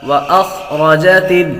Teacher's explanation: واخرجت را کو بھی پر پڑھیں گے، را پر زبر ہو تو را کو پر پڑھتے ہیں